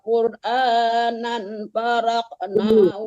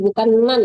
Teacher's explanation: tapi nang disamakan ke fa, hukum ikhfa dengung ya